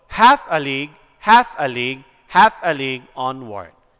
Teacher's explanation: this is stressed, unstressed, unstressed, stressed, unstressed, unstressed. Okay? So, it is dactylic because it implores stressed, unstressed, and stressed pattern.